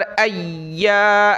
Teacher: या पर शद करेंगे और या को अलिफ की वजह से एक अलिफ की मिक़दार लिमिट में खींचेंगे। हमज़ा या ज़बर अय्या, अलिफ ज़बर या।